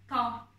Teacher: Ta harfi Türkçe'de olmayan kalın bir harf. Yine tok ve kalın bir şekilde söyleyeceksiniz. Dilinizi damağınıza götürerek söyleyeceksiniz bu harfi söylerken.